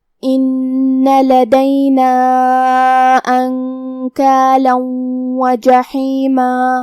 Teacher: حرف الحا کو ہم حلق کے درمیان والی حصے سے ادا کریں گے